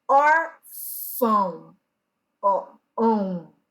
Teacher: o som não sai totalmente pelos meus lábios. Parte do som, ele sai pelo meu nariz.